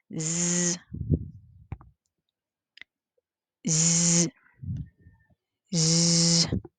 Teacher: That when it is voiced, point of articulation is alveolar. Manner of articulation, it is fricative.